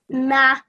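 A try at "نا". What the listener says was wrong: Make it a little bit longer.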